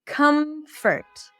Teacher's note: Comfort would be a cup sound, come, and then a schwa.